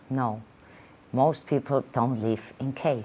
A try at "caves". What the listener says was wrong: In caves. In caves with a V. In caves.